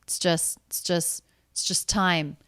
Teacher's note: it's just the ts sounds linked right into the next word